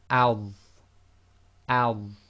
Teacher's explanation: Now this one is like the dhal, but it's the thick version, the heavy version, the tafkhim version of the dhal. So this will be al, al.